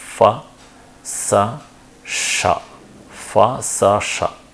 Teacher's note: the presence of narrow constriction in the oral cavity at different positions · all three are unvoiced fricatives. It means for the production of these fricatives, the vocal folds won't vibrate at all, the vocal folds will completely open, and the excitation is because of the constriction in the oral cavity at some position.